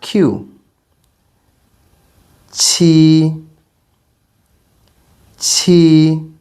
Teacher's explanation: Q is a bit aspirated meaning there should be some air